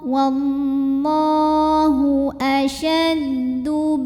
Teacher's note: Hamzah punya sifat namanya syiddah, jadi semakin kita tekan makin tertahan bunyinya. Saking kuatnya sandaran terhadap makhrajnya ya.